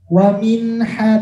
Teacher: Wa minha, tidak wa minha, jangan sampai berdengung karena dia jelas tanpa berdengung. Wa minha langsung. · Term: izhar